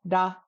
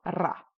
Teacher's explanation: Amdo loves to roll it, Kam loves to tap it